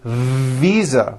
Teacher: I said visa with an unvoiced F. I should have said visa with a voiced V.